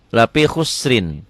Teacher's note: Tipis bunyi I, tebal bunyi O ya